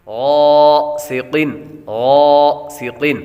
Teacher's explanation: ومن شر غاسق، غاسق، غین حروف مستعلیہ میں سے ہے اس لیے اس کو پر پڑھیں گے، سین حروف صفیریہ میں سے ہے سیٹی کی آواز آئے گی، اور قاف حروف مستعلیہ میں سے ہے اس لیے اس کو پر پڑھیں گے۔ · قاف حروف مستعلیہ میں سے ہے اس لیے اس کو پر پڑھیں گے۔ غاسق، غاسق، اور غین کے بعد غین کے ساتھ الف حروف مدہ ہے اس لیے اس کو ایک الف یعنی دو حرکات کے برابر لمبا بھی کریں گے۔